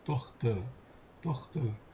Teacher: Dhe se R-ja pothuajse nuk lexohet kur gjendet në fundin e fjalës.